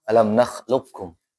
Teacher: Maka yang qf masuk ke kaf secara sempurna.